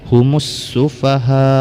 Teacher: Jadi tandanya seperti pada amanan nas, yaitu ada tasdid di depan huruf lam, maka alif lam ini diidghamkan, tidak dibaca lagi, langsung kepada tasdid sin. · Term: alif lam syamsiyah